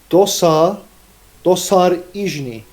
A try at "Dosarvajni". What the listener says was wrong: No, no, no. Don't make the emphasis on SA. Dosarijni.